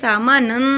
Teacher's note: سا کو ادا کرنے کے لیے زبان کی نوک کو دانتوں کے کنارے سے لگائیے۔ میم کو ادا کرنے کے لیے دونوں ہونٹوں کو ملائیے۔